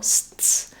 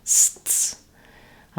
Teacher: my tongue is starting in the S position. It's stopping the air for the T and then bursting back into the S position. Sts. So there's a little interruption between the S sounds.